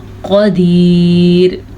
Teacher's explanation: قدیر وقف کر لیں گے، وقف کی وجہ سے را ساکن ہو جائے گی، جب ساکن یا را سے پیچھے دیکھا تو یا ساکن ہے، یا ساکن سے پیچھے زیر ہے تو اس زیر کی وجہ سے یہ را باریک پڑھی جائے گی، لیکن اگر ہم یہاں پہ نہیں رکتے تو را پر پڑھیں گے، کیونکہ را کے اوپر آٹومیٹکلی ہم دو پیش پڑھیں گے۔